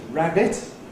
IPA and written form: ˈræbɪt (rabbit)